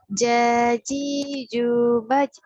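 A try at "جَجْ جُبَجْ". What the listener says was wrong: Pantulannya jangan baca.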